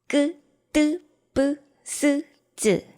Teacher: 그리고 마지막으로 된소리라는 발음들이 있죠. 좀 더 강하게 바람을 막았다가 꽉 막았다가 소리를 터뜨립니다